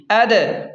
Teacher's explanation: یہاں پر قلقلہ کریں یعنی جھٹکے سے پڑھیں دال کو ، کیونکہ دال حروف قلقلہ میں سے ہے اور دال ساکن